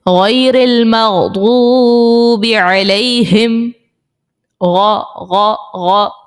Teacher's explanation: وہ جو غرارے میں آواز آ رہی ہوتی ہے وہی ہم نے غین اس طرح سے نکالنا ہے. بس اس چیز کا خیال رکھنا ہے کہ حلق کے اوپر والے حصے سے وہ آواز نکلے.